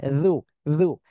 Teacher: যু জিহ্বার আগায় দুই দাঁতের আগার সঙ্গে লাগিয়ে উচ্চারণ করতে হবে